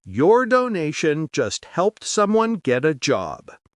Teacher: The focus word is job, and the stressable words are the key content words leading up to it. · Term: sentence stress